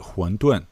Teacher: usually people will call it 馄饨, which is second, fourth